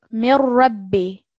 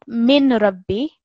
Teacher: And the next example, mir rabbi, not min rabbi. The noon sakin is completely merged into the sound of the ra with the shadda